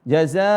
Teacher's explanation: di sini ada jaza ada Alif setelahnya makanya zanya panjang berapa Dua harakat seharusnya tapi karena ada Hamzah setelahnya maka dipanjangi lebih dari dua harakat